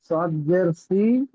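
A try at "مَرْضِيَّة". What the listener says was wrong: সদ নয়, বদ জের দি। হ্যাঁ ঠিক আছে, মারদি।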